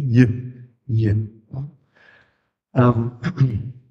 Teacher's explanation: palataler Halbvokal, entspricht dem Vokal I, aber ist ein Konsonant. Deshalb heißt er auch auf Französisch semi-consonant, was viel besser ist.